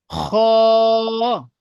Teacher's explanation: এটা পুর হবে, অর্থাৎ মুখ গোল করে পড়তে হবে।